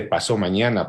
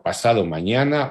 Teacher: Batres señala la caída de la D